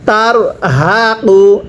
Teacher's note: ইয়াস হাদু এরপরে তা জবর তার হাজবর হাফ পেশ তার হা পড়ুন তার হাকিনের পূর্বে জবর হলে র সাকিন মোটা করে পড়তে হয়